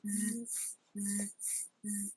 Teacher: z is voice, while s isn't